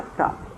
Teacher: a sílaba tônica está na penúltima sílaba quando isso acontece ela é chamada de paroxítona e observando o